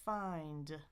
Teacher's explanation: tongue up to the bump, air out the nose, and then explode for your D